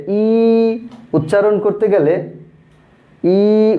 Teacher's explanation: ই উচ্চারণ করার সময় জিহ্বাটা উপরের দিকে, তালুর দিকে চলে যায়। ই উচ্চারণ করো, দেখবে ই উচ্চারণ করতে গেলে আমাদের জিহ্বাটা উপরের দিকে যায় একটু, এজন্য এটাকে বলা হয়েছে উচ্চ স্বরধ্বনি।